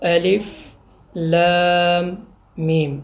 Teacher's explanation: لام ہے میم ساکن، میم کا میم میں ادغام تو غنہ بھی ہوا